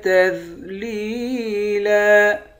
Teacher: آخر میں 2 زبر کی تنوین ہے، 2 زبر کی تنوین میں جب وقف کریں گے تو ایک زبر بن جائے گا۔